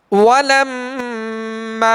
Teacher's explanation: میم مشدد میں غنہ کریں گے اور میم کے آگے الف مدہ ہے، الف سے پہلے زبر ہے لہذا الف کو ایک الف کی مقدار میں کھینچنا ہے.